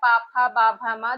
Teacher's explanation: दोनों लिप्स आपस में टच होती है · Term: ओष्ठ